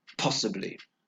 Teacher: 3 syllables. And the stress is on the first syllable, possibly.